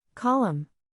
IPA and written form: ˈkɑː.ləm (Column)